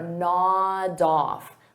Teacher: I'll take that D sound and I'll connect it on the off, but I have to combine it together.